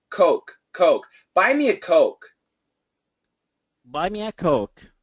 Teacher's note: Absolutely keep the O. Do not make it anything but an O. The longer, the better.